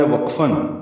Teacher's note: واو ہونٹوں کی گولائی سے، قاف پر اور با پہ قلقلہ ہے